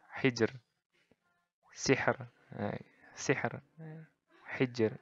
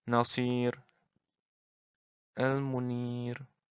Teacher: Jadi nggak ada penebalan di huruf ro-nya itu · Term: ro tarkik